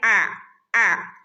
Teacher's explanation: തൊണ്ടയുടെ നടുക്ക് നിന്ന് വരുന്ന ലെറ്റർ ആണ്